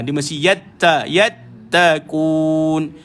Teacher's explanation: Kalau tuan-tuan baca huruf ta tak keluar angin, dia tak jadi.